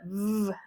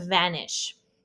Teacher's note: And then we have the V within phmic brackets which is the VV sound. It's a voice labial dental as in vanish.